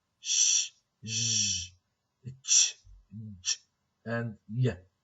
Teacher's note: So the front of the tongue, okay, towards the area between alveolar ridge and the hard palate. Okay, so this is in between the area between the alveolar ridge, alveolar, and the hard palate. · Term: alveopalatal